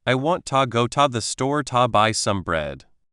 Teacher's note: The rhythm comes from the strong beats on want go store buy bread. The unstressed words just fill in the gaps very quickly.